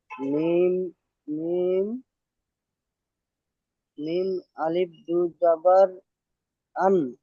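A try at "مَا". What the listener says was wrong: আচ্ছা, আলিফটা কিন্তু উচ্চারণ হয় না, আলিফ শুধু লেখার ক্ষেত্রে থাকে। মিম দুজাবার মান, মিম দুজাবার মান।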